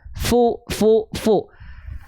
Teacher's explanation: dilafalkan dengan menyentuhkan ujung gigi dengan bibir bawah bagian dalam